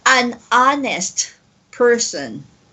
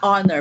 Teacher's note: it doesn't have the H sound in the beginning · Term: silent H